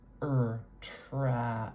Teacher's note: We make the sound with a really open mouth. Our jaw is very low, and our tongue is more forward in our mouth. It's almost filling up our lower dental arch. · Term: trap vowel